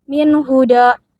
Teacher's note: nun mati dibaca jelas karena bertemu huruf H, yaitu huruf halki. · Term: idhar halki